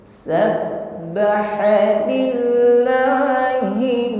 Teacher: ada bunyi yang tertahan di situ ya karena makhrajnya tertutup dengan sempurna sehingga suaranya terahan karena tekanan yang sangat kuat pada huruf ba